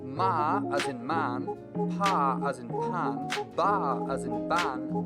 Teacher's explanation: Here the obstruction is created using both the upper and lower lips. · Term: bilabial